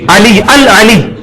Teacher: علی تو عین جو ہے وہ یہاں سے نکلے گی حلق سے